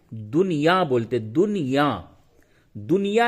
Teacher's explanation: आखरी में नून गुना होता है। नाक में आवाज जाती है। दुनिया। लेकिन कुरान शरीफ में जब भी ये लफ्ज आए तो उस वक्त या बोलेंगे। · دیکھیے عام طور سے جب اردو میں ہم لوگ بولتے ہیں تو دنیا بولتے، دنیا، دنیا یعنی آخری میں نون گننا ہوتا ہے، ناک میں آواز جاتی ہے